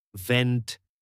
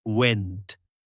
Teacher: V is sharper and buzzy and W is more round.